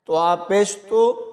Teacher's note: اس کے بعد طوا کو پر یعنی موٹا پڑھیں گے، طوا کی جگہ تا نہیں پڑھنا